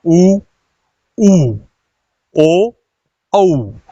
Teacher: तो होठ क्या हो रहा है इसमें? पूरी तरह से गोल हो रहा है। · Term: वर्तुल